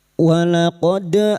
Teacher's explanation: huruf dal yang secara alamiah sukun berbunyi sebagai qalqalah sughra. Jangan lupa untuk menggemakannya.